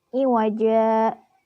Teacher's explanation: Nah, pada lafaz iwaja merupakan mad iwad karena jim berharakat fathah tanwin dan diwaqaf. Cara membacanya tanwinnya dihilangkan dan panjangnya 2 harokat. Karena asalnya ini iwajan karena memiliki sifat atau mempunyai hukum mad iwad berarti dibacanya dihilangkan tanwinnya jadi iwaja.